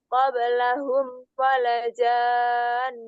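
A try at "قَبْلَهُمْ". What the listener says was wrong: Ini panjang ya. Afwan, ini panjang. Walajan. Kalau enggak salah panjang.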